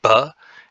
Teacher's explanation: we can obstruct air with our lips as in ba and we then we will call our sound a labial sound or even a bilabial sound